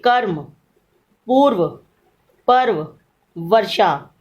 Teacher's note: इसमें आप क्या देखते हैं कि र ऊपर लगाया जाता है। र की ध्वनि का जब हम उच्चारण करते हैं उस समय वह पूरी नहीं होती।